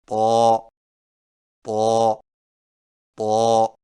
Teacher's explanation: طا کی ادائیگی میں زبان کی نوک کو سامنے والے اوپر کے دو دانتوں کی جڑ سے لگائیں اور زبان کے پچھلے حصے کو تالو کی طرف بلند کریں